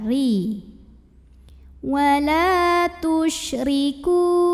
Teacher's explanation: Huruf ra dibunyikan secara tarqiq karena ro-nya ini berbaris kasrah. Maka cara bacanya tipis, pangkal lidah datar, ri.